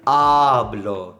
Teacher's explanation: when you say, for example, hablo, the stress is on the A